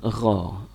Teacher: Gho ini kan posisinya seperti kho, dia posisinya di tenggorokan.